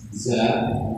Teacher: ada sifat huruf dari zain yang harus mengalir udaranya